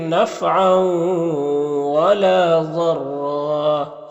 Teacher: یہاں پر رائے مشددہ کے اوپر زبر ہے تو اس کو پر پڑھیں گے اور وقف کریں گے تو 1 زبر کے ساتھ الف پڑھیں گے